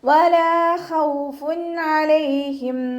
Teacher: വാവ് ഉച്ചരിക്കുമ്പോൾ ചുണ്ടുകളൊന്ന് വട്ടത്തിൽ പിടിച്ചു കൊടുക്കുക. ലാമിൻ്റെ കൂടെ അലിഫ് മദ് വന്നു. 2 കൗണ്ട് നീട്ടിക്കൊടുക്കുക കേട്ടോ.